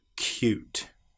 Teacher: we get the sound of the y before the vowel and after the very first consonant